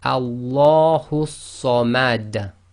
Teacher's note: the dal that is carrying the dhamma becomes sakin, and because it's one of the qalqala letters, then it's read with an echo